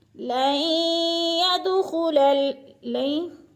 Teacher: لَن يَدْخُلَ لَن، نون ساکن کے بعد یا مشدد آ گئی ہے تو نون ساکن کو نہیں پڑھیں گے بلکہ لام کو یا کے ساتھ ملا کر ادغام کریں گے، مدغم کریں گے، اور دال پہ قلقلہ ہے۔